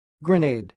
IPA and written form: ɡrəˈneɪd (GRENADE)